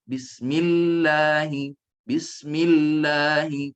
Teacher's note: Lidah cenderung dan bunyi keluar dari tepi kiri dan kanan. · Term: sifat inhiraf